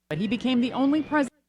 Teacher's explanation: that M, I don't think it's really canceling the TH, but it's making it tough to hear